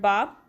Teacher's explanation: letter ba, it's pronounced when you combine the 2 lips